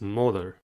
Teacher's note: Molar has 2 syllables and the stress is at the first one. The first syllable is mo.